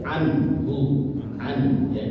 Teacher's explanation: Halki itu dari tenggorokannya. Jadi baca jelas ya, anhu, an ya, jangan sampai ada guna ya, anhu ya, tapi anhu. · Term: idhar halki